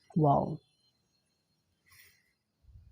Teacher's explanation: دونوں ہونٹوں کو گول کرنے سے